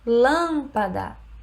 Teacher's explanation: em lâmpada a sílaba tônica é a antepenúltima